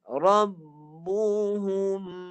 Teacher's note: Tekan kat hidung sikit je. Bukan panjang sangat. Dia tak sampai 2 harakat. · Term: mim mati